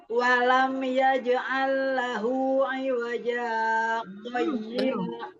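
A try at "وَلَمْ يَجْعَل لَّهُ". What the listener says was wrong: Belum, ainnya belum ngalir. Ainnya walam yaj'al lahu.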